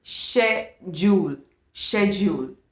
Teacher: ये आप इसको 3 syllables में डिवाइड करते हैं, लेकिन जैसे मैंने ज्वेलरी में आपको कराया था, इट्स अ 2 syllable वर्ड। इसमें आप फर्स्ट ब्रिटिश इंग्लिश में जो फर्स्ट CH जो आ रहा है वो आपका श साउंड दे रहा है and the first syllable becomes श।